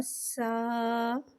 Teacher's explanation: سین کو ایک الف یعنی 3 حرکات کے برابر کھینچ کے پڑھیں گے۔ سین کو سیٹی کے ساتھ ظاہر کر کے پڑھیں گے، یہاں سین کو باریک پڑھیں گے اور الف کو بغیر کھینچے پڑھیں گے۔